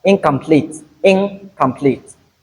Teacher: So the tongue will move to the position of the tongue when you say k, which is the velum, the lower roof of the mouth. Hence, this nasal sound will turn to the velar nasal, which is eng.